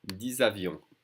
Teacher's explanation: usually the X is silent, but it's followed by a vowel, so we're connecting the two sounds. 10 avions with a Z sound.